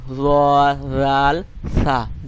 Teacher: আপনার জিহ্বার আগাটাকে সামনের যে দুটি দাঁত আছে তার আগার সঙ্গে লাগাইয়া আলতো করে উচ্চারণ করতে হবে